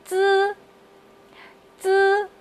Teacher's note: 用你的舌尖抵住你的上下牙齿的齿缝，放平舌头，这是一个平舌音，千万不要让舌头翘起来哦